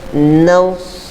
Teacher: naus tebal sedikit huruf sad, jangan baca nas. Kalau nas huruf sin.